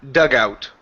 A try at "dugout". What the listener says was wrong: Okay, connect that sound instead of saying dug out. Dugout. Like it's one blah.